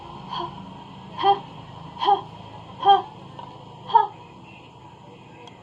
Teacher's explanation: And in glottal fricative voiceless, it is ha